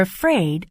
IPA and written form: əˈfreɪd (afraid)